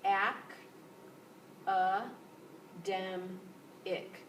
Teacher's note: that word has four syllables and it's the third syllable that is the loudest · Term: stressed syllable